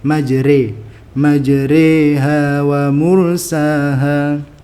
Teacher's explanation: dibaca dengan cara imalah atau mencondongkan bunyi Alif ke ya dalam rasio 5050 atau seperti gabungan vokal a dengan I sehingga menjadi e seperti e pada kata sore